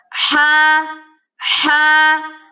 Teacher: ہا کو گلے کے وسط یعنی کہ گلے کے درمیان سے نکالیں گے، آپ کے تھروٹ کے بالکل مڈل سے یہ نکلے گا۔